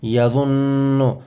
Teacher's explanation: کو مشدد کہتے ہیں اور نون مشدد میں غنہ ہوتا ہے، نون مشدد میں غنہ ہوتا ہے، آواز ناک میں جائے گی۔